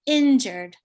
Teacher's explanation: for the word injured it's normally on the first syllable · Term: word stress